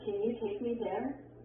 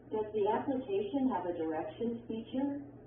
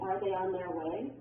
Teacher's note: Your voice goes up or rises at the end of a yes/no question. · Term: rising intonation